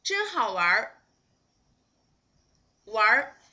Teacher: You need just pronounce 玩 and 儿 together. You just need to make them just like a whole syllable. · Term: 儿 化